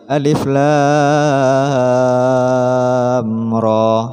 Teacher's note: bertemu dengan Hamzah maka harus dibaca satu Alif jadi cara bacanya Alif pendek lam tiga Alif ro satu Alif